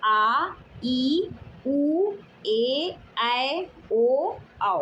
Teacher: इन स्वरों के उच्चारण में ह्रस्व स्वर से दो गुना यानी दो मात्राओं का समय लगता है। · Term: दीर्घ स्वर